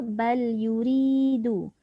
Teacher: Kemudian ayat 52 bal yuridu. Yuri tu nipis ataupun tarqiq.